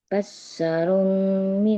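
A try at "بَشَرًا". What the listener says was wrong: Basyaron. Syanya nggak tasdid. Basyarom.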